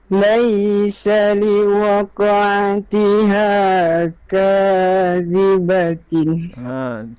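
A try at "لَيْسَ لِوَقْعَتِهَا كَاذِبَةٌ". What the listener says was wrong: Tun bukan tin. Kadzibatun. Kadzibatun ada skip dia pitching tadi tu, dia macam tak sharp.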